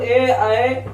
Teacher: ए का उच्चारण कंठ प्लस तालु से